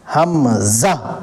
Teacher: یہ حلق کے جو شروع ہے وہاں سے حمزہ نکلتا ہے